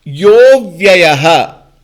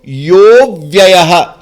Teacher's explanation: Before a vowel, when there is a visarga, the visarga turns to become O, and the a is dropped, and a is represented by one avagraha.